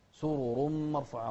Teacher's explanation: الراءات هني كلها مفخمة